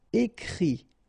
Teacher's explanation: phonetically you pronounce I because final T is not pronounced